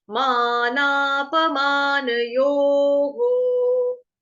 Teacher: विसर्ग का उच्चारण होगा हो से। क्यों? क्योंकि आगे ओ की मात्रा है।